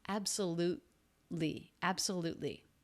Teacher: the next sound is the L consonant so it's a stop T absolutely absolutely it's not released absolutely that is not what we're